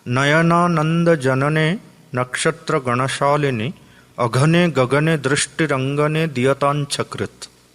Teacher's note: So you don't have the use of lips because there is no labial sound.